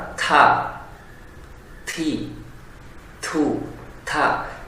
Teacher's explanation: Mengucapkan huruf ta namun tidak proporsional, artinya melampaui batas. Huruf ta itu adalah wilayahnya ujung lidah ke arah dasar daripada gigi seri atas. Jangan sampai masukin makhraj baru, yaitu dari tenggorokan.